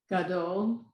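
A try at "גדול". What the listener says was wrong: Yes, Gadol.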